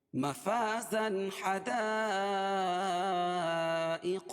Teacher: تنوین کے بعد حروف حلقی کے 6 حرفوں میں سے یہاں ہا آ جائے گی، اس کو ظاہر کر کے پڑھیں گے۔ بلا غنہ کے، مفازا حدائق وأعنابا، حدائق یہ جو ہے مد متصل ہے، وأعنابا حمزہ اور عین دونوں کو الگ الگ کی پڑھیں گے اور عین کو بھی نکال کے پڑھیں گے. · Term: اظہار حلقی